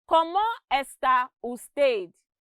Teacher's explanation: there is equal stress given to every word and syllable in the sentence but in english language we would say it differently how are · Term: syllable timed